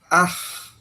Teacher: Ah itu berarti ada di dalam rongga mulut tenggorokan ya, dalam rongga tenggorokan. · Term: huruf ha